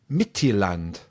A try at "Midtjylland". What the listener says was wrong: Yeah, almost. The D is silent at the end, but other than that, you've nailed it.